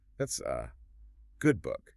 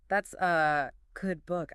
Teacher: The A just becomes a tiny microscopic grunt, physically attached to the word good. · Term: schwa